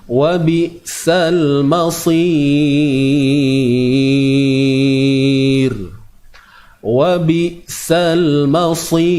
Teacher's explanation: Huruf ra ini dibaca nipis.